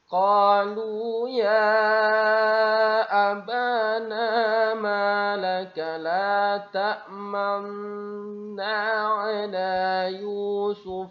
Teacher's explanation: nun pertama ini dihilangkan, dimasukkan ke dalam nun kedua dengan bukti ada tanda tasdik di huruf keduanya.